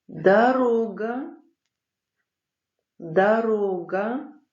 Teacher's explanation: Буква О. Буква О без ударения всегда произносится как А